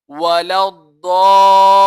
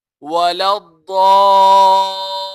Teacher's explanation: मद्दे लाजिम होगी और हम 3 अलिफ की मिकदार खींचेंगे। वाउ ज़बर वा, लाम ضاد अलिफ मद ज़बर ضاد, लाम या ज़ेर ली, वला ضالين, नून ज़बर ना, वला ضالين।